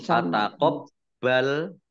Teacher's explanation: Fataqabbal baknya dibaca double ada tasdidnya. Minni nun tasdid dibaca runah atau mendengung ditahan 2 harokat.